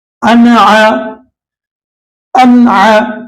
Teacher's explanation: نون ساکن کے بعد عین آ رہا ہے تو یہاں پر نون کی آواز کو ظاہر کریں گے